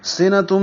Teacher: سین سیٹی جیسی آواز سے، صفیر کی آواز سے